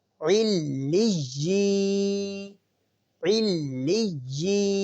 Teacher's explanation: یا مدہ کی پہچان یہ ہے کہ یا ساکن سے پہلے والے حرف کے نیچے اگر زیر ہو تو ہم اسے یا مدہ کہتے ہیں، اور یا مدہ کو ہم ایک الف کے برابر کھینچ کر پڑھتے ہیں